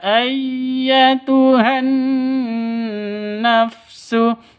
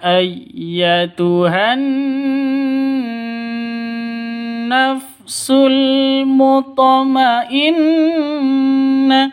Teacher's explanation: ini ada Nun tasdid dengung ya dua ketukan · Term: guna musyadadah